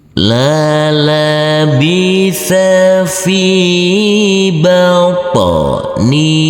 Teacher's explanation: Huruf po harus kita pantulkan karena huruf po yang bersukun ini adalah bacaan qalqalah.